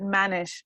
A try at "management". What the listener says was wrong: you need to finish the work when you were saying